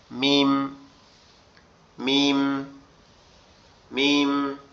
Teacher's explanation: মিম হচ্ছে আমাদের দুই ঠোটের শূন্য জায়গা থেকে উচ্চারণ হবে। এরকম হালকা আওয়াজে।